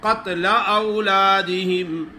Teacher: कौफ को मोटा पढ़ना है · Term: मोटे काफ